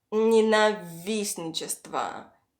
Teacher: the stress falls on the first и